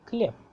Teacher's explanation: And when you will be learning about the voicing and devoicing of the consonants, you will also get to know a very interesting aspect of Russian grammar, that some of the consonants, they get their voice devoiced, like khlieb ends with be but sounds like pe